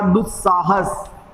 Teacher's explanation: विसर्ग के बाद दंत्य स आता है तो विसर्ग जो है वो आधे दंत्य स में बदल जाता है